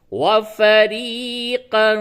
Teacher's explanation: یہ یا ساکن سے قبل زیر ہے، یہ یا مدہ ہے، اس کو تھوڑا کھینچ کر کے پڑھیں